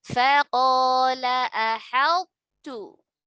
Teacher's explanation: To sukun bertemu ta, tidak melebur sempurna, tetap ada sifat tebal dari huruf to-nya baru ke huruf ta-nya.